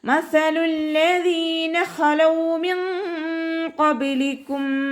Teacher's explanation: ലാമിന് ശ്രദ്ധ വന്നിട്ടുണ്ട്. 2 അക്ഷരങ്ങൾ ഉച്ചരിക്കുന്ന കനം കൊടുക്കണം. മണിക്കാതെ ഓതാൻ ശ്രദ്ധിക്കുക കേട്ടോ. മസലുല്ലദീ എന്ന് പറഞ്ഞിട്ട് മണിച്ചു ഓതരുത്.